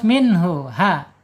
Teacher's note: Ha makhrajnya ada di bawah tenggorokan